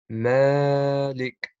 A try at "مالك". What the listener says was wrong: You don't have to prolong that much. Malik.